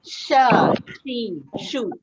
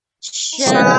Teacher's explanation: Dia ni ada sifat huruf yang berdesir. Jadi kita kena ada desiran macam mula tu. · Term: huruf shin